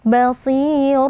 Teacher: Di sini terdapat mad silah sugra lagi dibaca panjang dua harakat. Basir walaupun kasrah dia tetap memiliki sifat tebal walaupun ketebalannya berkurang. Jadi tetap kita angkat pangkal lidah lalu kita panjangkan dua harakat karena di depannya ada ya sukun ya.